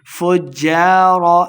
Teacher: جیم مشدد ہے، فا کو جیم کے ساتھ ملا کے پڑھیں گے. فجار لفی جحیم، یا مدہ ہے، دو حرکات اس کو لمبا کریں گے اور آخر پہ ہم نے وقف کا دینا ہے.